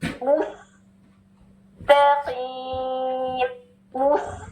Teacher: ٹھیک ہے, سین پہ ضمہ نہیں ہے نا, انرول کر دیں گے, موس, وہ نارمل پوزیشن میں لپس آ جائیں گے, اور سین کی سیٹی آئے گی